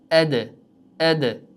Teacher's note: Qanaqa xato qilishadi o'quvchilar desa, arab tilidagi dal harfi bilan o'zbek tilidagi harfi farq qilar ekan. Negaki dal harfi yuqorida aytib o'tganimizdek tebranadi qachon sukunli holatda